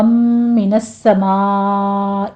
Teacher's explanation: سین کے اوپر تشدید ادا کریں گے، سختی سے پڑھنا ہے